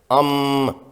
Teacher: بنیادی حروف کی ادائیگی کے لیے دو اعضاء آپس میں ملتے یا ٹکراتے ہیں، جیسے میم کے سکون کے لیے دونوں ہونٹ آپس میں ملتے ہیں